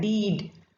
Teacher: the initial sound in the word beat and deed, we can hear the humming. So these are categorized as voiced sounds, and in English all the vowel sounds are voiced and 15 consonant sounds are voiced.